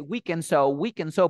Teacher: no dice Party dice Party te das cuenta aquí Qué pasa cuando la d se encuentra entre dos sonidos de consonantes se borra borra la d y dice we and so we and so